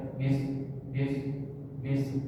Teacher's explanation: Dia tidak tapi bis. Jadi sin itu dia ada sifat desisnya.